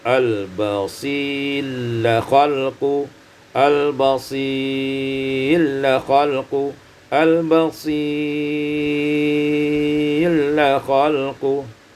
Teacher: idghamur ra fil lam, diidghamkan ra pada lam